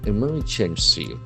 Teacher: So the accent falls on the second syllable.